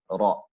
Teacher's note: So as the letter ra is being pronounced, naturally the tongue makes a slight vibration, ra. So you can feel the vibration on your tongue, ra.